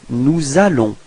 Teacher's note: So you can notice the liaison between S and A.